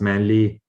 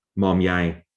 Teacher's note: So we get rid of the short syllable in the middle.